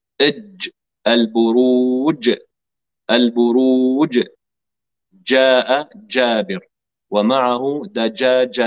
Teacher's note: الجيم من وسط اللسان مع وسط الحنك الاعلى